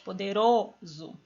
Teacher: aqui eu tenho quatro sílabas mas não importa porque a penúltima é mais forte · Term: paroxítona